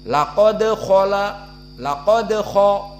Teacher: dibaca laqad laqad dan dia di akhir menjadi kuat laqod namun jika disambung maka agak lemah dinamakan Qalqalah Sugra